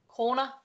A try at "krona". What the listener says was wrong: Don't roll the R's. Yeah, you don't roll the R's in Danish.